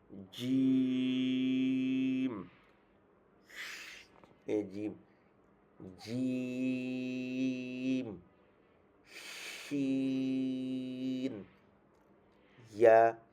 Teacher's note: জিহ্বার মাঝখান তার বরাবর উপরের তালুর সাথে লাগাবে